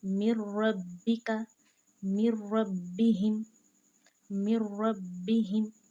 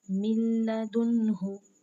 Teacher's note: रा और लाम को हमने जो है ना वो बगैर गुन्नाह के पढ़ना है